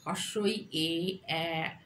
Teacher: যে স্বরধ্বনি উচ্চারণের সময় জিহ্বার সম্মুখ দিকে প্রসারিত হয় সেই জন্য এদের বলা হয় সম্মুখধ্বনি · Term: সম্মুখ স্বরধ্বনি